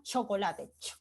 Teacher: Hay un cierre momentáneo y también hay un escape con fuerza, y a su vez hay un ruido o turbulencia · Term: sonidos africados